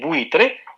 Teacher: En buitre, entonces buitre, la I es el núcleo